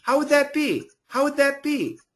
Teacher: combining the D and TH together and keeping the TH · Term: vibrated TH